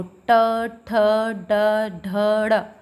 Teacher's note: तो ट, ठ, ड, ढ, ड़, जब हम इनको बोल रहे हैं तो हमारी जो जीभ है वो थोड़ा फोल्ड होकर हमारी मूर्धा को जो है टच कर रही है